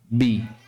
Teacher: pastikan bibir kita ketika melafalkan makhraj ba ini bibir dalam keadaan tertutup. Bi. Ya, bi tertutup posisi bibir atas dan bawah.